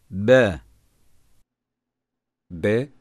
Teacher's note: iki dudağı birbirine kuvvetli vurarak çıkar ince aşikar ve şiddetli okunur